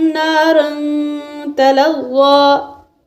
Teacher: نارن یہاں دو زبر کی تنوین کے بعد جو الف ہوتا ہے اس کو نہیں پڑھتے، تنوین پر اخفا ہوگا کیونکہ تنوین کے بعد تا حروف اخفا میں سے آ رہی ہے، اور تلغا کہہ کے سانس توڑیں گے، سانس لیں گے، وقف کریں گے۔